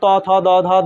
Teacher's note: দ ধ দন্তন্য দন্তন্য আর ত দিয়ে মনে রাখবা এটা হচ্ছে দন্ত বর্ণ এখানে দাঁতের ব্যবহার সব থেকে বেশি · ত, থ, দ, ধ, দন্তন্য, সবগুলোতেই দাঁত লাগছে বেশি।